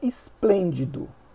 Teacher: tônica Então ela seria paroxítona e na e na palavra esplêndido nós temos a antepenúltima sílaba tônica então é proparoxítona